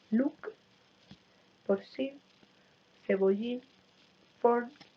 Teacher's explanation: Se pierde la O final, hay una apócope de la O final.